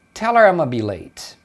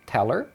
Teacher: Então aqui o her também perde o h, então eles emendam, né?